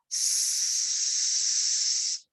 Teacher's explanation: A voiceless sound would be something like s, because when you touch your throat, when you say s, your vocal cords don't vibrate.